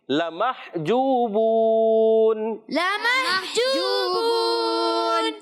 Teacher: اس کو لام کی زبر کو بالکل بھی نہیں کھینچنا، اس چیز کا خاص خیال رکھنا ہے۔ لمح ہا کی ادائیگی کلیئر، حلق کے درمیان والے حصے سے۔ جوبون، جو اور بو واو مدہ ہیں دونوں، مگر جب وقف کرتے ہیں تو یہاں قاعدہ ہو جاتا ہے مد عارض۔